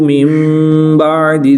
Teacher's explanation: नून साकिन के बाद हर्फ बा है तो यहाँ पर इक़लाब होगा, नून साकिन को मीम से बदलकर गुन्ना ज़मानी करके पढ़ेंगे